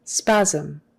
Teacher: That SM is kind of like a ZM. Spasm. Spasm. And your lips just barely touch on the end for that M.